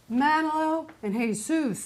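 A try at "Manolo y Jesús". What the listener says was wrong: You don't pronounce the J.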